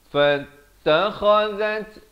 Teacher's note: kha di hujung kerongkong